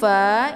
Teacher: boleh diwakafkan sampai merata ya kemudian Fa Ini dibaca pendek ya letaknya di bibir sebelah dalam bibir bawah sebelah dalam dengan ujung gigi seri bagian atas